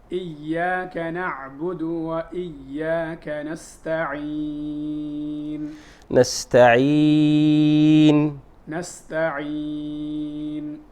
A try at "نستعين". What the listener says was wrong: نحن قلنا المحذور هنا أن تصحب الغنة حرف المد. هذا هو المحذور، أن تصحب الغنة، فنقول نستعين، ليست نستعين وإنما نستعين.